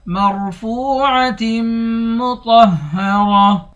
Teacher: مرفوع، میم کو را کے ساتھ ملا کر را کو موٹا پڑھیں گے، فا کو واو کے ساتھ ملا کر واو کو 1 الف کے مقدار کھینچیں گے، واو حروف مدہ ہے۔